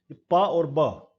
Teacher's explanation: बाई, बाई का mean टू, दो होठ मिलकर के और जो आर्टिकुलेटर बनते हैं वो टू लिप्स है, इसीलिए इसका नाम बाइलेबियल है। Upper lip is the passive articulator and lower lip is the active articulator